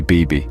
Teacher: of B varies in different languages which adds to its charm Spanish for instance the B is pronounced with less air making it sound softer almost like a V